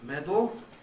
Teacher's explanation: So as I put it on the handout, schwa and n may make syllabic n, so that sudden becomes sudden. Schwa and l may make syllabic l, so that medal becomes medal.